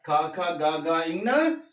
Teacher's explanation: కంఠ్యాలు అంటే కంఠము నుండి పుట్టే అక్షరాలు